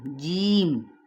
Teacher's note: ای کر کے پڑھنا ہے، چے کی آواز نہ ہے